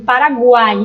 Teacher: eu tenho uma semivogal, uma vogal que é o som mais forte, o A, e uma semivogal novamente, o I